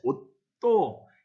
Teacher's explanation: 옷 이렇게 발음을 합니다. 이때 시옷은 디귿으로 바뀌어 발음이 됩니다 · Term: 음절 끝소리 규칙